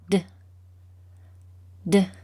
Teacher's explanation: our mouths are slightly open and our tongues touch the back of our teeth as we release a puff of air